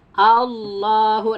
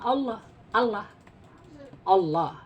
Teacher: ada huruf tentu yang bersifat istilla ketika di tafkhim dia harus ke arah O ya